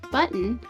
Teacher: we pronounce some words like B-U-T-T-O-N as button, we're not pronouncing the O at all, but we still have two syllables. That's because N is also a syllabic consonant.